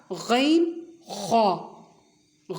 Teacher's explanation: پھر ہے مخرج نمبر 4 غین خا۔ غین خا، یہ دونوں حروف ابتدائے حلق، ابتدا یعنی ابتدا جہاں سے حلق شروع ہوتا ہے وہاں سے یہ دو حروف ادا ہوتے ہیں۔ اور اس حلق کے حصے کا نام ہے ادنائے حلق۔